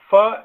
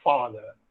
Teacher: The active articulator is the lower lip. The passive articulator is the upper front teeth.